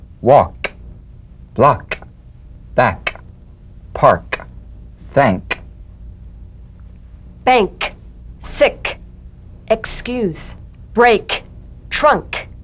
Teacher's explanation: the unvoiced tongue back plosive consonant with the tongue in the GE position let the tongue spring